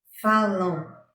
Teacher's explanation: A letra M tem som de U, representando uma semivogal, pois está apoiada na vogal A na mesma sílaba.